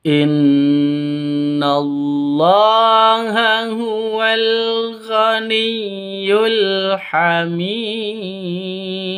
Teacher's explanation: nun tasydid berdiri sendiri, gunnah musyaddada dengung dua ketukan.